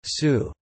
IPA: suː